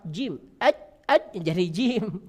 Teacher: kalau jim bagian tengah lidah menyentuh ke atas, menempel aja